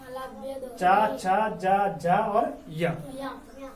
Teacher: जो कंठ से थोड़ी ऊपर से बोली जाती है, तालव्य ध्वनि।